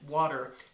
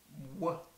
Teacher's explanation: co-articulated consonant meaning that it's produced at two places of articulation it's a bilabial because it's produced with both lips W and a Veer because of the position of the tongue